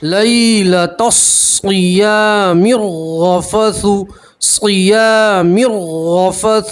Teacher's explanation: میم کو را سے ملائیں گے, را کے اوپر تشدید, را مشدد کے اوپر زبر ہے, را کو پور پڑھیں گے, موٹا پڑھیں گے